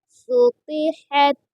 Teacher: سین پیش سو، قا زیر قی، سوقی، حت زبر حت، سوقیحت۔ قا کو پر یعنی موٹا پڑھیں گے اور ہا کو درمیان حلق سے ادا کریں گے